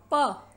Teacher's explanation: उच्चारण के समय निचला होठ ऊपर उठकर ऊपर के होठ को स्पर्श करता है और मुख से बाहर निकलने वाली वायु का रास्ता पूरी तरह से रोक देता है